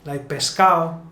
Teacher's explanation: when a word ends in ado, like pescado, usually we're going to remove the D